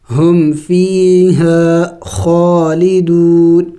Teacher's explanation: ہم فی یا مدہ ہے، اس کو کھینچیں گے ایک الف کے مقدار